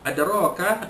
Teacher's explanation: Adraka ada, ya, qalqalah sughra, huruf dal mati pada pertengahan kalimah dilantunkan sedikit saja